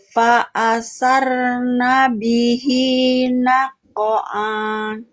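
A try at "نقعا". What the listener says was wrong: Nako'an, pendek jangan nako'an. Hanya pendek. Nako'an. Nako'an, jangan nako'an. Jangan dibaca panjang, hanya lagi. Ainnya hilang.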